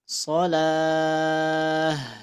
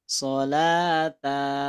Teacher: bulat contoh misalkan ada kalimat begini kalimat begini Sha Tan maka ketika berhenti ini bunyinya disukunkan menjadi ta bulatnya menjadi Bunyi ha Shah oke ya jangan sampai shata Nah itu keliru Oke sip